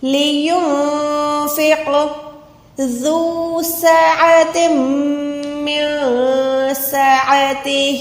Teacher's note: لینفق ذو سعۃ من سعتہ، ذال سافٹ لیٹر ہے، نرم حروف ہے، اس میں آپ سیٹی والی آواز نہیں دے سکتے۔ سین پہ آپ نے سیٹی کی آواز دینی ہے۔ عین کو حلق کے درمیان سے یعنی حلق کے بیچ سے ادا کرنا ہے۔